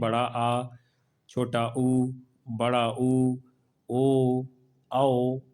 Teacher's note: पश्च स्वर मतलब जिनके उच्चारण में जिहुआ का पीछे का भाग काम करता है